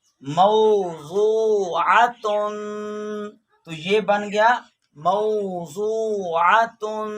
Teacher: واو ساکن ہے، اس کے پیچھے والا حرف میم پہ زبر ہے، تو یہاں پہ وہ لین ہو رہی ہے، اور یہاں پہ بھی وہ ساکن ہے، اس کے پیچھے والا حرف پہ پیش ہے، تو یہاں پہ وہ مدہ ہو گئی ہے۔